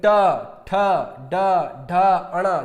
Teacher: जैसे मैंने टा बोला तो टा जो है जैसे ही मैंने बोला मेरी जीभ मुड़ करके और मेरे तालुब पर लगी, टा, ठा, डा, ढा, अणा। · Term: मूर्धन्य